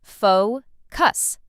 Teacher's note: Some learners put the stress in the wrong place, but it's simple. Faux cuss. Stress on the first part.